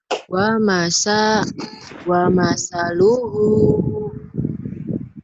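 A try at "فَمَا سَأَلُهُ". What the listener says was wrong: Dari tadi fa-nya dibacanya wa. Wa mah yang ini Neng nih. Ini mah sambung.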